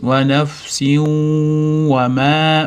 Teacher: Nafsiu deganda mana f ni sukunini berdik, s dan tagida mana qing'ir chiziq, ya'ni tanvin kelyapti, vav ga idg'om qilamiz, kirgizib ushlab turamiz, cho'g'unnali idg'om bo'lgani uchun ushlab turamiz · Kirgizib ushlab turamiz. G'unnali idg'om bo'lgani uchun ushlab turamiz. Va nafsin va ma met cho'zamiz.